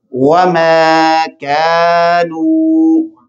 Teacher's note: میں نے وما میم کو لمبا کیا، کیوں؟ اس کے ساتھ الف مدہ ہے